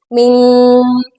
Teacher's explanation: نون ساکن کے بعد کاف آ رہا ہے اور کاف حروف ہلکی میں سے نہیں ہے تو یہاں پر ہم نے غنہ کہنا ہے